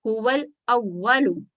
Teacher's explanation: الف ہے اور اس کے پہلے جو لام ساکن ہے اس کو ظاہر کر کے پڑھیں گے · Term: لام ساکن کا اظہار